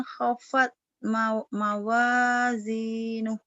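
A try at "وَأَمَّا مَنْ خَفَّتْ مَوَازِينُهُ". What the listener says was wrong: Iya, hopatnya terburu-buru. Tenang. Wa amma wa amma man khaffat mawazinuh. Mawazinuh.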